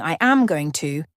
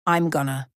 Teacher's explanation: Instead of saying I am going to, we say I'm gonna. The G sound is softened and sometimes even dropped, making it sound much faster. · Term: Elision